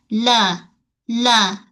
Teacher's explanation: Kemudian huruf lam. Kita punya tepi hujung lidah menyentuh pada gusi gigi atas.